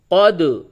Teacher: اس پہ دال پہ قلقلہ ہوگا، دال ساکن ہے یعنی کہ جزم ہے